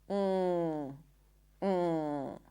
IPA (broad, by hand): ŋ